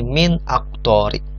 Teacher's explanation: Nah, dibaca jelas nunnya nih, min aktori. Jelas, tidak samar, tidak melebur, tidak ikfa dan tidak idgham, tapi izhar, jelas. Nunnya dibaca dengan jelas